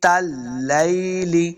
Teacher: تا کو لام کے ساتھ ملا کے پڑھنا ہے، لام مشدد ہے، لام زبر یا لئی، اس کو لمبا نہیں کریں گے، لام زیر لی۔